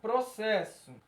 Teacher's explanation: Tá muito claro que o R está presente nessa pronúncia, porque senão ia ficar possesso. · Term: encontro consonantal